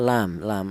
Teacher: Lam itu berasal dari ujung lidah menyentuh langit langit mulut. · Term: huruf lam